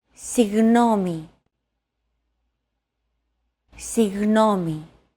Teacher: your tongue and the back part of your mouth should be barely separated from each other while you blow a steady stream of air between the small separation. Another approach is to try to pronounce a G as if an H sound were to follow after it and hold that sound while you exhale. · try to pronounce a G as if an H sound were to follow after it and hold that sound while you exhale. The after sound created by that H is what you're looking for.